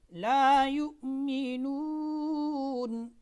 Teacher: اب ہم توسط کے ساتھ 3 الف کی مقدار اس میں مد کرتے ہیں